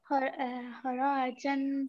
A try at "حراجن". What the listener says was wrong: Don't extend رو. حراجن. حراجن.